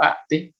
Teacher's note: un anciano o un adulto mayor preglotaliza las marcas, digamos, flexionales o las marcas de los sustantivos y no aparece la T